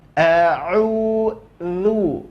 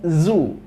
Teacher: Jadi bukan a'uzu, enggak. Makhraj huruf dha adalah ujung lidah nempel ke ujung gigi seri atas, maka otomatis lidah akan keluar dari batas giginya. Maka keluar a'udzu, bukan zu, ya.